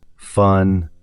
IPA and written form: fʌn (fun)